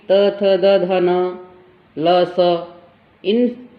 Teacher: जीवा दांतों को स्पर्श करती है